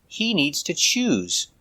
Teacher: use the zebra z sound with vibration